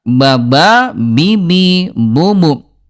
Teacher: Ini huruf ba jahar, tidak ada udara.